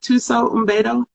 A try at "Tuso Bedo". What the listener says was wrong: I don't think you pronounced the M. I think it's Tuso Bedo. Might say Umbedo. But I do know it's Tuso.